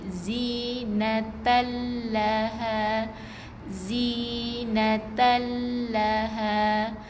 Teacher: zinatal la baris atas, jangan baca dengan panjang lagi